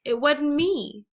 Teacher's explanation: negative auxiliaries of wasn't and isn't the t becomes completely omitted and in a sentence would sound like it wasn't me or